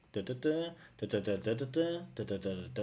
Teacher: A lot of rising intonations at the end of clauses, which isn't overly natural.